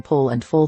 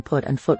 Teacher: it is generally somewhat more rounded in pole and full than it is in put and foot respectively that's because having an r or an L right next to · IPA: [ʊ]